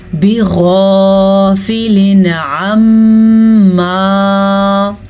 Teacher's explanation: وَمَا اللَّهُ بِغَافِلٍ، بِغَافِلٍ غین کو بھی پر پڑھیں گے، غین حروف مصالیہ میں سے ہے اس لیے. اور تنوین ہے، تنوین کے بعد حروف ہلکی میں سے عین ہے تو ہم تنوین کو ظاہر کر کے بغیر غننے کے پڑھیں گے